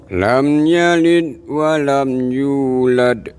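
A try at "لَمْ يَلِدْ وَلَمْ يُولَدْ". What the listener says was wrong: Nah, dikasih de-nya Pak. Itu kol-kolah itu. Lam yalid wa lam yulad.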